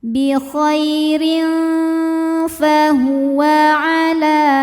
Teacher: bunyi tanwinnya samar-samar menuju huruf fa disertai bunyi dengungan. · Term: ikhfa awsat